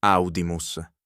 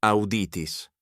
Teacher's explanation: Now the fourth conjugation, using the verb to hear. Its long i stays put.